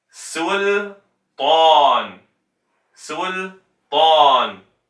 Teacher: Make sure that you round the lips fully for the u, su, and then open on the ta, tan.